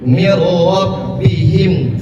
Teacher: Idgham bila gunnah itu tidak ditahan. Hurufnya ada 2, lam dan ro.